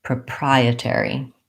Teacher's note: I have, I think, probably secondary stress on the air syllable because I do use a clear vowel there.